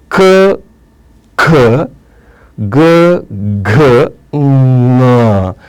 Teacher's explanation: ಇವುಗಳು ಗಂಟಲು ಅಥವಾ ಕಂಠದಲ್ಲಿ ಹುಟ್ಟುವ ಕಾರಣಕ್ಕಾಗಿ ಇವುಗಳಿಗೆ ಕಂಠವರ್ಣಗಳ ಎಂತನು ಕರೀತಾರೆ